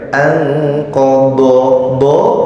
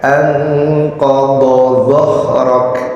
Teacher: do-nya do ya tebel, zo-nya lebih tipis.